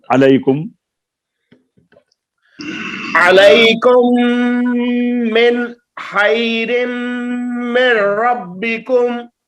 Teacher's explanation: من میں پھر قلقلہ ہو گیا ہے، اور علیکم کی میم پر غنہ نہیں ہوا، میم مشدد ہے